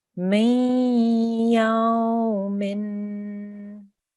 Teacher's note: make sure you have a 2-second nasal sound because there's a tanween on that meme as well.